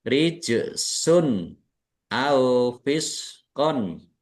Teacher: Jim sukun bacaan qalqalah dibaca memantul ditampakkan pantulannya. Rijsun dumah tanwin bertemu dengan huruf alif izhar kemudian fisqon uhilla.